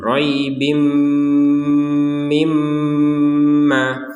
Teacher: tanwin bertemu mim dimasukkanlah tanwin kepada huruf mim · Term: dengung